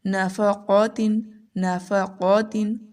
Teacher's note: قاف بہت موٹا پڑھیں گے